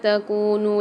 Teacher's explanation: کاف کے ساتھ واو مد آ رہی ہے تو یہاں پر بھی ایک الف مدار کھینچیں گے ، نون کے ساتھ بھی واو مدہ اور مد آ رہا